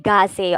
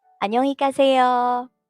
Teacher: So the G here, though it's G, the sound should be in the middle of G and K.